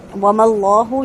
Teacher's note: اللہ کے لام کو پر کر کے پڑھیں گے